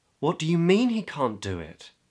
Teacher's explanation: So there's surprise in the voice. The pitch is in the upper part of the voice and it's quite hurried, you know. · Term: upper part of my voice